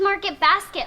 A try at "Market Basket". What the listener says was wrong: You mean Market Basket? No, the emphasis is on market. Market Basket.